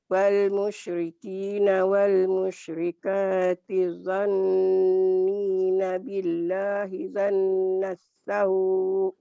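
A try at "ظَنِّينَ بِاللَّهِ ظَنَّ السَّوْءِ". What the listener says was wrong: Zanna ya, jangan janna, zanna. Billahi zannas sau.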